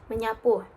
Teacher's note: Contoh pada kata meenambah sapu sama menyapu yaitu fonem s akan luluh